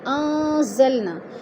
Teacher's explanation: انزلنا، ان پہ اخفا ہے، نون ساکن کے بعد زا حروف اخفا میں سے آ گیا ہے تو ادھر اخفا کریں گے، آواز کو ناک میں چھپا کر پڑھیں گے اور نا پہ الف مدہ ہے۔